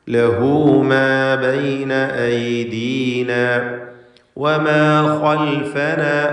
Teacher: ലഹു എന്നതിലെ ഹാ ദമീറിനെ 2 ഹറക്കത്തിൻ്റെ അളവിൽ ദീർഘിപ്പിക്കണം. മദ്ദുസ്സിലത്തി സുഗ്റ നൽകിക്കൊണ്ട് ലഹു മാ ബൈന ഐദീന വമാ ഖൽഫന.